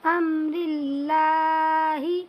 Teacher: اللہ کے لام کو باریک پڑھیں گے کہ اللہ کے لام سے پہلے را کے نیچے زیر آیا ہوا ہے